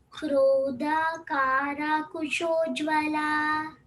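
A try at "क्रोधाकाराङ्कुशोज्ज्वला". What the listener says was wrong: Krodhakarang, Krodhakarang Kushojjvala. Krodha, Mahaprana, not Krodha. Krodhakarang Kushojjvala. I don't hear the ng sound. Krodhakarang Kusha. Krodhakarang Kushojjvala. Krodha.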